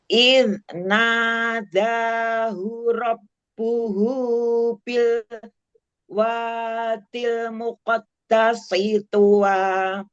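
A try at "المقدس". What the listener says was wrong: Muqaddasi sin, tipisin. Bukan sod Bukan sod sin ya, tipiskan lagi ya.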